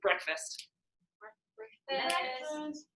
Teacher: so it's that first syllable is stressed